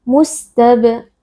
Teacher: Mustab huruf ba qalqalah sughra karena di sini ba sukun posisinya ada di tengah-tengah kata, kita baca dengan suara yang memantul